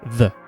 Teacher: And you're just lightly blowing air from your mouth. But when you voice it, as in use your vocal cords to push sound out from your throat and your lungs, the th turns into the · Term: voiced